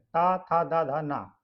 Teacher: त वर्ग के जो वर्ण होते हैं वो दंत होते हैं